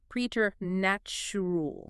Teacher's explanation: you instantly think it starts like president or present but it uses a long e e sound